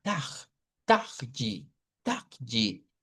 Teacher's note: Es como como cuando aspiramos aire, eh, como un jadeo aspirando el aire. Entonces ahí es donde le decimos que miren, pueden hacer esto como que fuera una especie como de J, ver como jadeanto, taj taj taji en vez de hacer la RU francesa. · Es como aspirado, ¿verdad? Como cuando aspiramos aire. Como un jadeo aspirando el aire.